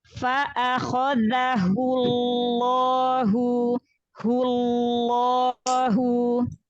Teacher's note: Berarti lamnya ada 2. Tahan di lam sukunnya dulu ya, lam sukun pada lafzul jalalahnya, yang lam tasydidnya kasih bainiyah, kasih inhiraf.